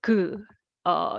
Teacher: And so when we make this character is given with a g sound, so g, you will hear the vibration coming from the tongue back area